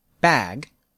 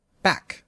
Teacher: bag is longer than back